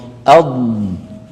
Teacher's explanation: ولاحظوا بان صوت الضاد رخو يعني قابل للمط اض ال ا ارجو ان يكون امتداد الصوت واضح في الفم